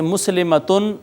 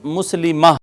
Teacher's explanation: اگر گول تا آخر میں آ جائے تو وہ وقف کی حالت میں ہا رہ جاتی ہے، جیسے مسلمتن، مسلمہ رہ جائے گا۔